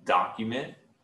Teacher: you want to emphasize that first syllable